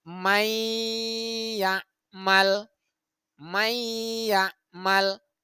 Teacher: nun selanjutnya contoh yang kedua May ya'mal mayya'mal jadi Nun dilebur Nun matinya dilebur kemudian dimasukkan bunyinya ke huruf ya dan dia dibaca dengan dengung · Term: idgam bunah